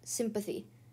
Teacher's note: Here, the N has changed to an M within the word. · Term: internal sandhi